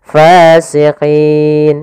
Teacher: Maka fasiqin, karena sebelumnya ada ya sukun, kemudian ada 2 sukun, maka yang pertama dipanjangkan dulu karena di sini menunjukkan huruf mad. Setelah itu baru nunnya dimatikan. Fasiqin. Nah, dalam hal ini untuk panjang mad arid disukun sendiri kita boleh memanjangkan sepanjang 2 harakat, 4 harakat atau 6 harakat.